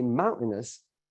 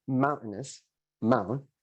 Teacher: it's pretty evident that the first syllable is stressed, mountainous, mount, and that one takes up more time coming out of your mouth, and the other ones are kind of relegated a bit.